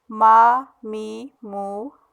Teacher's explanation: اچھا جب دیکھیں، اب یہاں پہ ہم کیونکہ میم پڑھ رہے ہیں میم اس وقت، تو میم میں ہم نے گوننے کی آواز نہیں نکالنی، ہم نے ناک میں آواز نہیں لے کے جانی